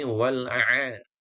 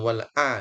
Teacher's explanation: Di sini kita fokus dua huruf yang makhrajnya sama, yaitu huruf A dan Ha. A dan ha itu di wastal haqqi di tengah tenggorokan ya. Maka pastikan posisinya pas supaya keluarnya makhrajnya juga pas. · bukan di bawah a tapi a ditekan sedikit tengah tenggorokan